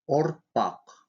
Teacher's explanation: Твердый губной звук произносится кратко и приобретает звучание между О и У. При произнесении этого звука губы вытягиваются вперед и слегка округляются. Язык отодвигается назад.